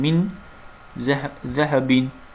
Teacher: Skunun hərfi və tənvindən sonra həlq hərfləri, yərməlun hərfləri və bə hərfindən başqa qalan 15 hərf gəldikdə nun hərfi ixa olunur. Bu halda səs qunə ilə iki səs miqdarında davam edir. Yəni naqis idğam baş verir.